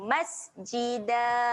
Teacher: Da kita berhenti dekat sini, buangkan satu baris. Jadi dia akan mati dengan bunyi dal yang panjang saja. Masjida. Panjangkan 2 harokat.